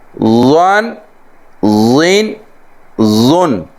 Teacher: سیٹی کی آواز بھی نہ آئے اور حرف کو موٹا بھی پڑھنا ہے